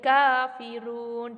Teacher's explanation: kafirun dibaca 2 ketukan. Di situ adalah disebut dengan bacaan mad arid li sukun